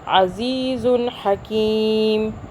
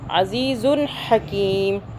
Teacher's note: ہم رکے بغیر، ہولڈ کے بغیر، بغیر ادغام کے اس کو عزیزن کر کے ادا کر کے اگلا حرف پڑھ لیں گے